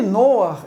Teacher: A semivogal, o patar furtivo, não contam, não formam sílaba. O patar furtivo deve vir antes da consoante na pronúncia e não depois dela, quando no fim das palavras, para que o hebraico não termine com vogal.